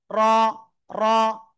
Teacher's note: Just একবার থেকে দুইবার একটু বাড়ি লাগতে পারে, র। র।